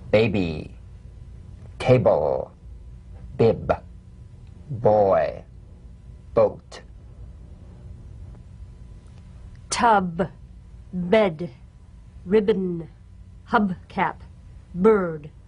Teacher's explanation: the springing away from contact not by pressing the lips together you'll feel a gentle voiced pulsation on the lips like a delicate crisp tap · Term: voiced labial stop